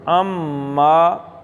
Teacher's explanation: اما، نون نہیں پڑھنا، آئین سیدھا میم میں چلا جائے گا